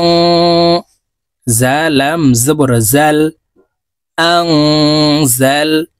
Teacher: নুন সাকিনের পরে ইকফার হরফ জা আসছে, তাই এই নুনকে নাকের ভিতরে লুকাইয়া গুন্নার সহিত পড়ব।